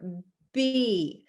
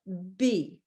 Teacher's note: when i say the letter b i put my lips together b unlike the vowel where your mouth is open and the